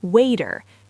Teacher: says water with what we call a flap T, sounding like a D